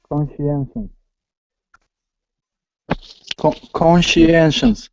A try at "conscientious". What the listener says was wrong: there is no SEC there is no second n